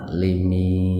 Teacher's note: Waqaf itu tanda berhenti, atau ada tanda berhenti, ada waqaf diawali mad tabi'iyah. Bacanya panjang Pak, 4 sampai 6 ketukan. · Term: mad arid lisuku